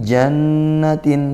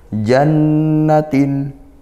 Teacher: nun bertasydid dibaca gunnah dengung ya